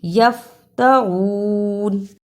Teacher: فا پہ بلا وجہ قلقلہ نہیں کرنا، فا پر جزم ہے